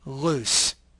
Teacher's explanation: the Airstream passes along the sides of the tongue you can feel this positioning by saying the word loose then